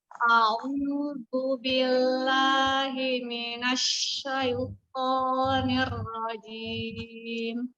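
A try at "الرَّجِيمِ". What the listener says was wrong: Giginya tidak ditahan, dia rajim, tidak ditahan giginya. Niro, tidak bertemu giginya. Ya, jangan ditahan menahan bibir, tapi dengan menahan gigi ya, tidak.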